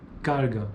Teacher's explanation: Fricativa glotal vozeada. E o exemplo, carga, pronúncia típica do dialeto de Belo Horizonte